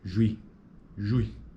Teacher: Observe que em juizado, a primeira sílaba apresenta um ditongo que inicia com proeminência acentual na área vocálica de U